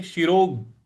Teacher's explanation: ओम श्री परमात्मने नमः श्रीमद् भगवत गीता अथा ष्टो अध्याय श्री भगवान वाच श्लोक है 13वा श्लोक समंकाय शिरोवन म के ऊपर जो अनुस्वार है उसका अंग का उच्चारण ले आएंगे और शिरो शिरो यहां रोग यहां पे जो ग है उस पे आघात देंगे